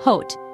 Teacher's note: in Indian English the o sound is more rounded